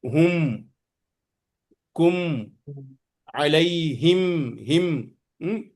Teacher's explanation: جب میم پر سکون ہو اس کا پڑھنے کا کسے، ہم، کم، علیہم، ہم، پورا میم کی آواز ہوٹ بند کر کے نکلے گا. ہوٹ بند نہیں ہوا تو کیا ہے، میم برابر نہیں پڑھ سکتے. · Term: میم ساکن